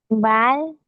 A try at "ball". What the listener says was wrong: No, es ball, porque no es la A. Es una O. Ball.